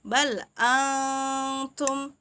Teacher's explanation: Jadi bukan dibaca jelas tapi samar. Dibaca samar dan juga cara membacanya itu harus didengungkan, jadi ditahan 2 harokat, 2 sampai 3 harokat ya. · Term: ikhfa hakiki